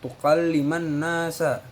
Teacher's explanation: gunnah sebab huruf nun ditasdid